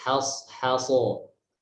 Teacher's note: Jadi H tipis, so tebal, H tipis lagi, so tebal lagi.